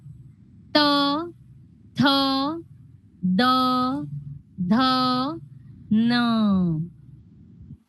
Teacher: 2 दातांच्या मध्ये या पुढच्या वरच्या आणि खालच्या दातांच्या मध्ये आपली जीभ येते. ओके? पुढे येते जीभ.